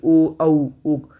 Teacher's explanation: कंठ तालव्य, जब कंठ और तालु दोनों से स्वर टकरा के निकलते हैं, ए आई। कंठ ओष्ठ्य, कंठ से निकलते हैं और ओंठ को छू करके